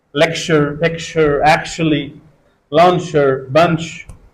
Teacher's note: instead of CH we can pronounce sh